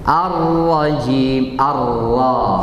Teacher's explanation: Huruf ra juga tebal. Huruf ra tebal di sini. Harus kita pangkalnya naik juga. Tapi bukan seperti ta. Naik sedikit aja.